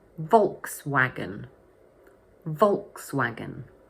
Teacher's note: So the word has three syllables, and the first one is stressed.